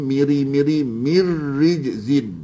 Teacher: Mir rijzin itu ra nipis